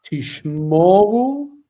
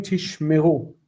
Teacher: there was a shift in the accent to the end that caused the middle vowel to reduce to shva